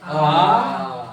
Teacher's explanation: आ में पूरा मुंह खुलेगा हमारा। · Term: विव्रत